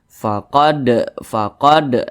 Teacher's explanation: atau kira-kira dua katukan bilani faqod huruf Dal perhatikan di samping termasuk kepada salah satu huruf Qalqalah apabila dia sukun maka dipantulkan